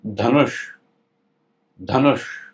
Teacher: और ये जो श है, षटकोट वाला श जिसको कहते हैं, इसके लिए जीभ को टच करना है मूर्धा पर